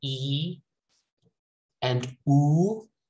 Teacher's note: So when I say E and oo, those are high vowels. My tongue goes up.